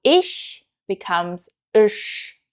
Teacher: Another very characteristic sound of Hessisch is the isch sound instead of the high standard German sh sound.